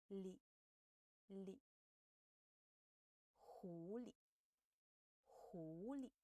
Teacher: The le here has no tone. Well, um we can read it a little shorter and softer